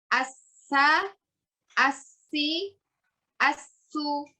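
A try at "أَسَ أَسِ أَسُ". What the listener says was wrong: Jangan terpotong. Asa, asi, asu.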